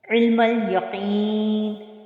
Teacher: अब आइन को फिर बस्ते हलक से अदा किया, मीम लाम के साथ मिल रहा है, अलिफ बीच में साइलेंट है, और यहाँ पे कौफ, कौफ भी हुर्फ मुस्तालिया में से है और इसको हम मोटा पढ़ेंगे, ठीक है।